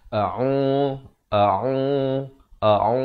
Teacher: Ain di pertengahan kerongkong dengan baris dhammah dipanjangkan 2 harakat